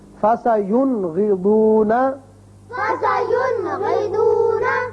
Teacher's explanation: نون ساکن کو ہم نے ظاہر کر کے پڑھا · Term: اظہار